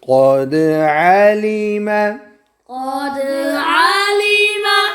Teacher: قد قوف موٹا، دال پر قلقلہ